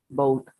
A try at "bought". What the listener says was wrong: Aquí no se pronuncia la U. Ok, bought. No bow.